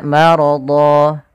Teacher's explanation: dha-nya kita ganti panjang menjadi dha, bukan lagi dhon tapi dha ketika kita waqaf. Maka dinamakan dengan iwad karena dia menggantikan yang asalnya tanwin berubah menjadi panjang sebagaimana mad tabi'i. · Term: mad iwad